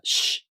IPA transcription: ɕ